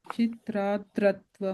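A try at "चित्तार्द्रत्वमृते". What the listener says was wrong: The third you are putting an ir sound. That's not there. Chittardrattvamrite. Yeah, the ir sound, the r sound is coming in the da, not in the ta.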